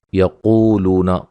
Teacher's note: قاف کو موٹا ادا کریں گے